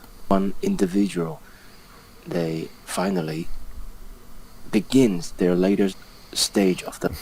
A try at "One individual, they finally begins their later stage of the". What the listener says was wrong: Notice all the pausing here between words. Like, finally, pause. Pause, stage, pause. Means he's thinking about what to say.